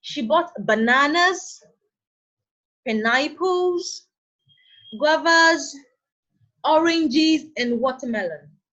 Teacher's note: Now, in this sentence, we listed some fruits, and after each fruit is itemized, the tone of the voice is raised to indicate incompletion. Banana, pineapples, guavas, oranges, and watermelon. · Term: rising tone